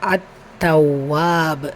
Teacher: தாவில் இருக்கிற ஷத்தாவுடைய அழுத்தம் கொடுங்க, வாவுலையும் ஷத்தா இருக்குது அதற்குள்ளேயே அழுத்தமும் கொடுங்க. கூடவே அலிஃப் மத்தா இருக்குது, 2 ஹரக்கத் நீட்டம் கொடுக்கணும்.